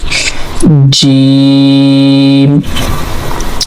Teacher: Actually, in the Jim we are using our middle part of tongue. I show you now our middle part of tongue to touch with the middle palate.